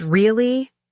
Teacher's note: when someone says really with a rising tone, they might be showing surprise. The tone of voice creates the question, even if the word itself isn't a traditional question word.